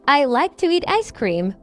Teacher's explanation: the words like and ice cream have more stress. The other words are softer and quicker.